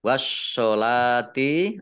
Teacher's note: Kemudian wawu fathah berdiri, mat tobi'i, panjang 2 harokat. Wassolati, alif lamnya juga alif lam samsiyah, tidak dibaca. Langsung masuk ke huruf berikutnya, yaitu shod. Ditandai shodnya ada tasdidnya. Shodnya dibaca double. Kemudian lam fathah berdiri, mat tobi'i, panjang 2 harokat.